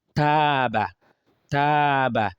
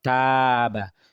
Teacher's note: the alif takes the sound a because it's a light letter is coming before it